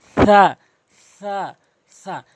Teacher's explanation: সা হরফটি জিহ্বার আগা এবং সামনের দুটি দাঁতের আগা থেকে নর্মালি সা বলবেন। অধিকাংশ লোক সিন ও সতের উচ্চারণ করে ফেলে, সা বলতে হবে, সা।